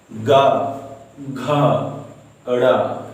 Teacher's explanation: ग, घ, ड़, ये सब बोलने से कंठ में दबाव पड़ रहा है। इसी कारण इस वर्ग को, का वर्ग को कंठव्य वर्ग कहा गया है।